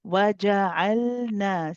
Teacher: So we keep the lam going for a little bit, then we go on to the noon. The noon also has a mad alif at the end.